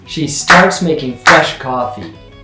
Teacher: starts is strong, fresh is strong. Some people would say coffee is also strong, but let's keep it simple. · coffee is going to be a little bit faster in there because it's a little weaker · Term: two main beats